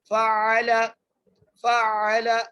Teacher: عین کو حمزہ میں مکس نہیں کرنا، بلکہ آئین کو آئین ہی ادا کرنا ہے